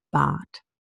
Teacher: Bart is often pronounced without the R altogether, and simply the R causes a total lengthening of the sound